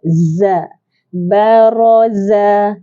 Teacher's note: Za ada desiran. Sifatnya ialah safir. Apa maksud safir? Desiran yang kuat.